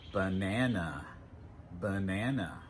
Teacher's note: In banana, the second syllable, na, is stressed, but the 2 unstressed syllables sound like banana, banana.